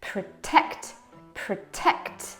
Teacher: the schwa is between p and t, so we just kill it.